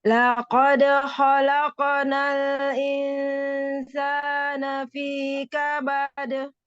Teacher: Membunyikan huruf-huruf qalqalahnya jangan ragu-ragu. Di sini ada dal sukun dengan qaf sukun ya.